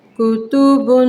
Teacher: آپ جانتے ہیں اس کو غنّے کے ساتھ کیسے پڑھنا ہے، کتبن، غنّہ کریں گے 2 سیکنڈ کے لیے